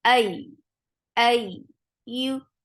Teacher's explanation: And as you will touch ya when you are joining hamza with ya, this is the place where you will create nabar, and nabar is active when there is tashdid on ya.